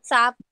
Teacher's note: सांप नहीं, हम सांप स को आ की मात्रा और ऊपर चंद्र बिंदु, तो थोड़ा सा जैसे बोलते हैं सा, उसको अर्ध बिंदी मतलब थोड़ा सा उसमें उच्चारण न का चाहिए